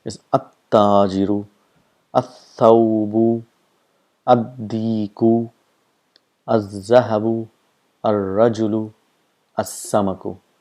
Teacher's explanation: pronounced by bringing the tip of the tongue just in front or just near the teeth, and those letters are called huruf shams.